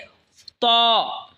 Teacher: জিহবার আগা সামনের উপরের দই দাতের আগার সঙ্গে লাগায় উচ্চারণ হবে ত